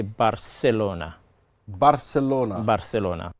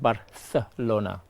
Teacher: the C is like the th sound